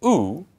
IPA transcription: ʊ